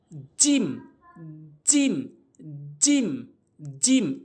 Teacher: জিহ্বার মাঝখানের অংশটা উপরে তালুর সঙ্গে লাগাবো